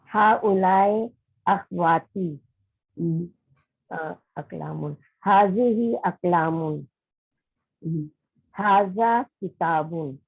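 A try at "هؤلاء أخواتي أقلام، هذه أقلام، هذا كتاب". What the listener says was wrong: Good.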